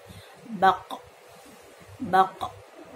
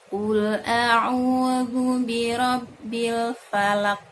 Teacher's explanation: Ketika sukun jadi dibenturkan dengan sangat keras sehingga muncul dari sifat qalqalahnya. Baq, baq, qa, qi, qu, baq.